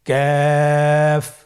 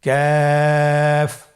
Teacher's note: তৃতীয় নম্বর হরফটির নাম ক্যাফ। কাফ উচ্চারণের ক্ষেত্রে অবশ্যই পাতলা করে উচ্চারণ করতে হবে এবং 3 আলিফ টেনে পড়তে হবে। · কাফের মাখরাজ আমরা স্ক্রিনে দেখতে পাচ্ছি। কাফের মাখরাজ হলো জিহ্বার গোড়া থেকে একটু আগে বাড়িয়ে তার বরাবর উপরে তালের সঙ্গে লাগিয়ে উচ্চারিত হয়।